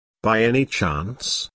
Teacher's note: Notice the rising intonation, which is used in yes, no questions to confirm that something is true.